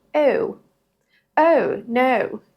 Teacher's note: British English is a whole different ballgame altogether. They use a schwa at the beginning.